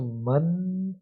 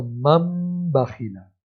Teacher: नून साकिन के बाद जब बा आता है तो नून साकिन की आवाज़ ख़त्म हो जाती है, वहाँ पर मीम की आवाज़ आती है